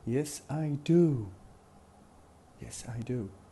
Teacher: We don't say de, we say do, because it falls at the end of the sentence, so it has to be stressed. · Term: Strong